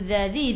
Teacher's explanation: Lilladzi, tekan ke dalam lam, lam ada sabdu. Dzadzi, hujung lidah keluar pada gigi depan. Zi 2 harakat, ada ya mad asli.